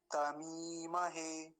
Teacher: मकार पर दीर्घ इ का है बड़ी ई की मात्रा है तो लंबा खीच बोलेंगे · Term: दीर्घ ईकार